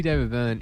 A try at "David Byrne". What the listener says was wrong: It does sound when you say David Byrne, it sounds like you're saying David Boone, the old the cricketer.